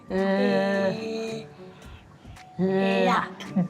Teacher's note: Ooh, so I'm seeing with the L sound, his tongue is coming out, which with the L is produced in the very back of the top two teeth, lifted